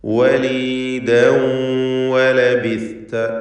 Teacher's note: ചുണ്ടുകൾ വൃത്താകൃതിയിലായിരിക്കും. വാവ് ഉച്ചരിക്കുമ്പോൾ ചുണ്ടുകൾക്കിടയിൽ നിന്ന് തന്നെ വരണം